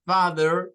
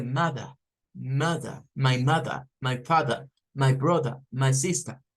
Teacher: Tiene que ver con el sonido de la R al final de las palabras. Es decir, las palabras que terminan con vocal y R al final, los británicos en su mayoría acostumbran a no pronunciar la R. Por ejemplo, si nosotros hemos escuchado toda la vida father con father, eso es más inglés rótico. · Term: inglés no rótico